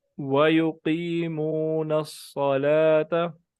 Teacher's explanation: हाँ, ये जो वाव है इस पे आप देख लें कि होंठ वाव पढ़ते वक्त होंठ जो है ये सही तरह गोल होने चाहिए